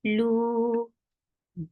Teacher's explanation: circle your lips for dhamma, make it two counts long